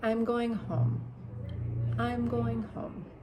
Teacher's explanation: your voice kind of drops. It's when you're making statements, right? When you just want to say something. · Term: falling intonation